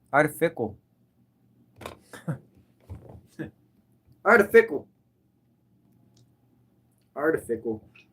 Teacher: I've never said artificial correctly. I don't make sh sound. I always said it like artificial.